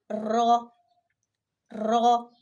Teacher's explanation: ज़बान के किनारे जब ऊपर वाले 4 दांतों के मसूड़ों से लगते हैं, और इसमें ज़बान के पिछले पुश्त को भी थोड़ा सा दखल होता है, तो उससे एक हर्फ रॉ अदा होता है